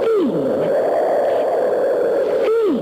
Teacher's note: you can hardly hear the th sound that starts the word thing it's like a thin breath of air